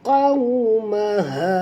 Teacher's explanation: Qawmaha, maha. Di sini ha simpul, jadi kita kena keluarkan daripada pangkal tekak kita